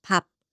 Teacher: When 비읍 is used as 받침, it closes with a P sound like 밥.